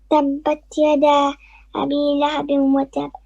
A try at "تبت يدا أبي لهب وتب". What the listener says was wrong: Too fast. So say Tabbat yada.